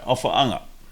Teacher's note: There's a glottal break there, ofaofata'i.